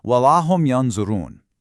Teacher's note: Your tongue just kind of hovers preparing for that heavy dha. · This requires ikhfa, specifically a middle degree of hiding the noon. You don't say "yanzurun" clearly, but you don't swallow it entirely either.